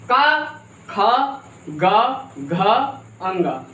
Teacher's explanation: का, बोलिए का। कहाँ से? कंठ से आ रहा है ना